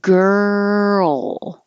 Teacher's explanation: hold the tongue in the l position a little longer so that the l can be heard